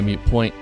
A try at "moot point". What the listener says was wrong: No, you said mute. It's moot.